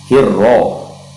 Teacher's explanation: ha itu makhrajnya berada di tengah-tengah tenggorokan, atau dalam istilah tajwidnya wasatul halqi, yaitu dia ada di tengah tenggorokan.